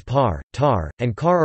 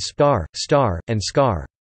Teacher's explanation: Initial voiceless stops, like the P in pie, are aspirated, with a palpable puff of air upon release, whereas a stop after an S, as in spy, is tenuous, unaspirated. When spoken near a candle flame, the flame will flicker more after the words par, tar, and car are articulated, compared with spar, star, and scar.